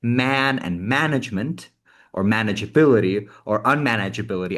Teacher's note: there's a stressed syllable and then everything around it is really really compressed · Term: stress-timed language